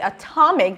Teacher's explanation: the same if we say atomic the stress shifts and then the t is the beginning of a stressed syllable and then it's no longer flap t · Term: aspirated t, aspirated T